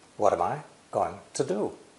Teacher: Some vowels, am and to, become unstressed.